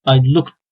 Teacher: voiceless Sounds la bittiği zaman biz Ed ekinin ekinde sadece T sesi getiriyoruz